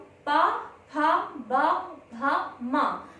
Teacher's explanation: हमारे जो ओठ है वह आपस में मिलते हुए शब्दों का उच्चारण करते हैं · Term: पा वर्ग